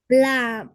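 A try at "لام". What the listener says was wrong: शाबाश।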